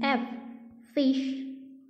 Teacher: तो एफ ये हमारे लेबियो डेंटल साउंड है